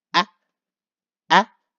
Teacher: it will be the uphill high pitch tone go be ah and go up ah so remember when we